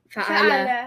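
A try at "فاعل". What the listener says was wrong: No, look, fa should be long.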